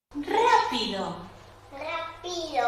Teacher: Está colocando la variación del tono en la segunda sílaba. Y no solamente eso, sino que le está dando más volumen y más duración a la sílaba pi.